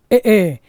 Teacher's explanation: नाम दंता और कंठ तालव्य कौन सा है ए कंठ तालू कंठ और तालू से बोले जाते हैं